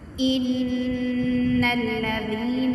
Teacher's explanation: اب ان پہ جو ہے وہ غنہ کریں گے، کیونکہ نون مشدد میم مشدد پہ ہمیشہ غنہ کیا جاتا ہے